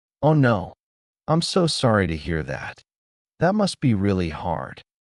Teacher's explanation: Notice how the tone is lower and slower.